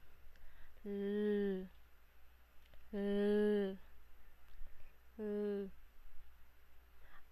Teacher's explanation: ang letrang L ay panggilagid at paggilid